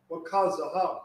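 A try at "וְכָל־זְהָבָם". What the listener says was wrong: Wakasa. Wakazahab. Wakazabak.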